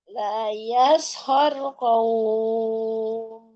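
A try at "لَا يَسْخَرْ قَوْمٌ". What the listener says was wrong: O-nya lurusin dulu. Qaf. Harokatnya fathah. O. Kemudian bertemu waw sukun. Bukan qaw. Tapi qawm.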